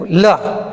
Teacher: जब हम इसका उच्चारण करेंगे, जीभ कहाँ से टकरा रही है, हमारे मसूड़ों पे टकरा रही है, इसलिए इसको भी वत्सर्य कहा जाता है।